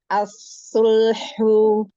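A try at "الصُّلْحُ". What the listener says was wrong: Nah, doma monyong lagi. As-sulhu.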